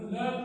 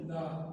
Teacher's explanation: لام زبر ل اور لام زبر الف لا، آدھی آواز سے پوری آواز میں پڑھا تو معنی تبدیل ہو گئے